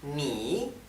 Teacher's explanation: fíjense que la I se pronuncia bajando y subiendo